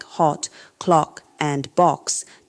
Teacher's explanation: The A sound in lot words like hot, clock, and box doesn't exist in most American dialects. D's short, back, rounded vowel requires coordinating tongue position with lip rounding, creating a crisp quality that clearly separates these words from others in the British vowel system.